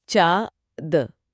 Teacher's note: अनुनासिक यानी चांदबिंदी। इसका उच्चारण मुंह और नाक दोनों से मिलकर होता है।